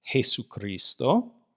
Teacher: Notice that what we call the letter J in English, this is called Jota in Spanish. It makes a rough H sound, or a rough breathing.